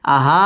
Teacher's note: مد منفصل তিন আলিফ টান দিয়ে পড়তে হবে